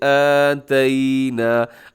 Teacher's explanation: کھڑا زبر کو تھوڑا سا لمبا کر کے